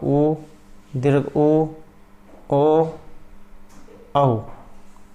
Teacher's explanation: ये ऐसे स्वर होते हैं जिनका उच्चारण करने पर होठ का आकार गोल हो जाता है, इसलिए इन स्वरों को वृत्तमुखी स्वर या वृत्ताकार स्वर कहा गया है।